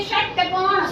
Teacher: जीभ मोड़ के बोलिए